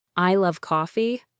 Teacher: But if you say, "I love coffee," by stressing coffee, you might be contrasting it with another drink, perhaps suggesting you love coffee but not tea.